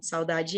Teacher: saudade é um ditongo totalmente oral